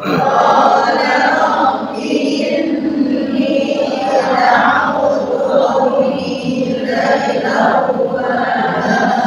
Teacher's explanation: Inni, ni-nya bertasydid dibaca gunnah